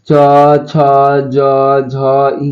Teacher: अब तालु से च वर्ग का उच्चारण होता है।